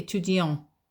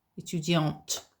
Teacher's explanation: And in that case, you pronounce the t. You don't pronounce the t with the male version